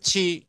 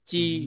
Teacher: ছি মানে বাতাস বেরোবে